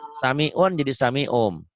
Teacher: iklab itu hurufnya cuma satu ba, bunyi N-nya berubah menjadi M